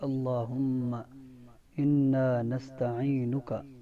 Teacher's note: نون کے اندر غنہ ہوگا اس لیے کہ نون مشدد ہے